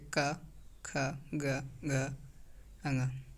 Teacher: जीभ का पिछला हिस्सा हमारे कंठ को छूता है, जैसे क, ख, ग, घ, अंग, उसे कष्टीय व्यंजन कहते हैं।